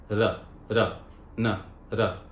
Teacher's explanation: जीभ को लेकर जाना, लेकिन टच नहीं करना, उसके बीच में से हवा पास होनी चाहिए।